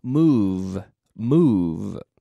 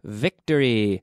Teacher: the V is really an F but it's a vocalized voiced F so we take the F sound and we add the vocal cord